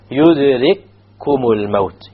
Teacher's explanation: You have a first kaf which is silent, followed by a kaf which has a dhamma, so the two kafs will merge. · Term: idgham